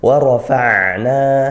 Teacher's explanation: ra dibaca tafkhim tebal karena dia berharakat fathah.